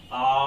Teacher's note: आ बिल्कुल पश्च भाग से आ रहा है